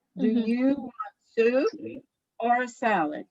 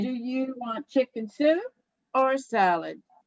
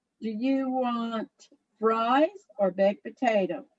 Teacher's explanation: the voice goes up on the first choice and down on the second or on the last choice